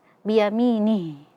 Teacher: di sini di akhir ada huruf ha yang kita sukunkan, maka jangan lupa dialirkan huruf ha-nya